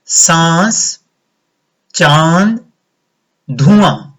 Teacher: अनुनासिक का उच्चारण करते समय वायु मुख के साथ साथ नाक से भी बाहर आती है · सांस, चांद, धुआं। आपने देखा जब मैंने इनका प्रयोग किया तो मेरा मुंह खुला हुआ और नाक से भी वायु बाहर आई।